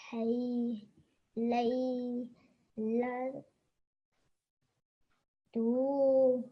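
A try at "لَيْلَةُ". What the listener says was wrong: This tu, you shouldn't make long because it only has a dhamma, okay? And a dhamma sound is only 1 second long, okay? So, laylatu.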